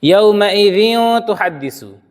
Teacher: اور دیکھ لیجیے آپ، یومئذ تحدث، دیکھ رہے ہیں، حالانکہ یہاں پر بھی تنوین ہے، لیکن چونکہ تنوین کے بعد وہ تا ہے، ان 6 حرفوں میں سے یہ حرف نہیں ہے، تو ہم نے اس میں ناک میں آواز کو اندر رکھ لیا، آواز کو ظاہر نہیں کیا ہے